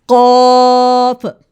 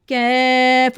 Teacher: कॉफ और कैफ दोनों टंग के रूट से हैं, लेकिन कॉफ हैवी और गहरी साउंड में है, कैफ जो है वो लाइट और नर्म सॉफ्ट साउंड में है · तो डियर किड्स, आपने इजी डिफरेंस फॉर किड्स, आसान फ़र्क है कि आपने जो कॉफ है हैवी साउंड आवाज़ पे अदा करना है, और जो कैफ है इसको आपने लाइट साउंड में अदा करना है